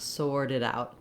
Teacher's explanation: So the T, the flap, is voiced.